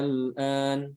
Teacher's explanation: Lamnya itu tidak diidghamkan ke huruf berikutnya. Ya, tapi dia dibaca idhar aja, bukan idgham. Ini sama panjangnya 6 harokat. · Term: mukhaffaf